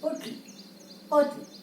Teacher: T is clearly pronounced. So there is the second syllable stressed.